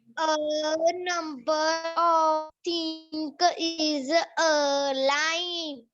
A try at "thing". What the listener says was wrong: तो बेटा आप एक तो थिंग को थिंक बोलते हो, वो गलत है. थिंग थिंग है वो, THING.